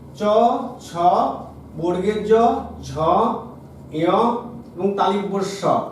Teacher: চ বর্গ অর্থাৎ চ, ছ, বর্গের জ, ঝ, ঞ এবং তালিব্য স, এই যে ব্যঞ্জন ধ্বনিগুলো যখন আমরা উচ্চারণ করি তখন জিহ্বার শক্ত তালুতে স্পর্শ হয়ে এই ব্যঞ্জনগুলো উচ্চারিত হয় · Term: তালব্য ব্যঞ্জন